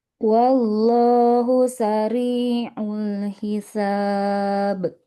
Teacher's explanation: Sariul huruf ainnya jangan terlalu mirip hamzah.